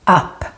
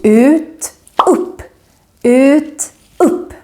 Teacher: Here, the U becomes very short because we have two consonants coming after the U, the double P's.